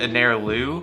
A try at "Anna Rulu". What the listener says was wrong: No, the first one was pretty close. It's Anna Rulu. Anna Rulu. Separated into two. So my name, Anna, and then Rulu. Like French, Rulu.